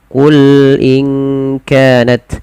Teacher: Qul itu kadang dia memantul. Usahakan tidak memantul dan mengalir ya sifat lam.